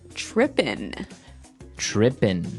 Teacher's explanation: it doesn't have the g at the end which isn't really grammatically correct but that's kind of the way it's pronounced yeah we we would never say the g right so if